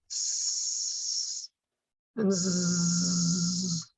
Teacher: you'll feel the vibration with the z the voiced sound